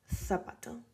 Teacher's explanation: in Spain, people say zapato, as if you had the TH. So zapato, something like that.